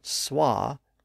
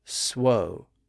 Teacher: the vowel shifted from SWA to swo so it shifted to one of those rounded vowels where we round our lips and in that environment of s wo the W sound was